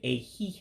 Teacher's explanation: that second I in a he is not pronounced · That second I in ehihie is not pronounced. Otherwise, you would be saying ehihie, hey, ehihie.